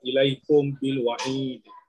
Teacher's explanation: Okey, silakan. Mim bertemu sukun atau mim sakinah bertemu dengan ba. Okey. Berdengung 2 harakat. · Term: Ikhfa syafawi